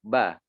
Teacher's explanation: tempat keluarnya huruf ba ini adalah dari kedua bibir gitu ya. Kedua bibir bertemu ba.